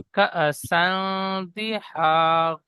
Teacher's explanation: ওয়াকা সান্দি ওয়াকা কাফের কাফের পরে যে হামজার উপর সাকিন এসেছে, সাকিন যুক্ত হামজাকে জি একটু ঝটকা বা ধাক্কা দিয়ে পড়তে হয়।